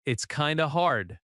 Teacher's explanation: The stress is on hard, not kind of.